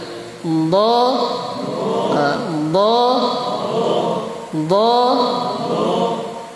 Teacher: Dha. Suaranya dikasih tebal. Suaranya harus terangkat naik. Pangkal lidahnya harus terangkat naik. Jadi dha bukan dha la, tapi dha. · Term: huruf dhad